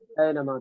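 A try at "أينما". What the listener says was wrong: قرآن میں جو آیت ہے اینما تکونو یدرککم الموت ولو کنتم فی بروج مشیدہ، ہے کہ نہیں؟ تو اس کو کیسے پڑھتے ہیں آپ؟ اینما پڑھتے ہیں یا اینما پڑھتے ہیں؟ تو ایسے ہی یہاں پر بھی اینما پڑھیے نا، معروف پڑھیے، بالکل مجہول نہیں۔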